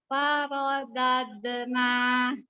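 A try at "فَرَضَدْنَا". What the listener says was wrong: Jadi kol-kolah itu nanti usahakan jadi langsung keluar, jadi mantul istilahnya. Jangan kayak kita baca beneran. kalau dibaca farodade. Nah, ini kan berarti kita membaca. mantul. Jadi farodadena gitu.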